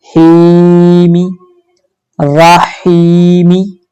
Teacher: हा के साथ या है जज़म वाली, इसलिए हम हा को 2 हरकात की मिकदार लंबा करेंगे